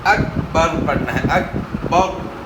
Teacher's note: کے اندر جو ہے نا آپ نے قلقلہ کرنا ہے، لیکن چھوٹے کاف کے اندر جو ہے آپ نے قلقلہ نہیں کرنا